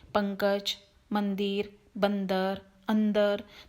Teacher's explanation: मुंह बंद करके जो नाक से हमारी आवाज आ रही है वाली साउंड, इसको ही अनुस्वार कहते हैं